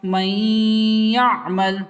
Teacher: ناک میں اور منہ میں آواز گنگنا کے جائیں گے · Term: ادغام یا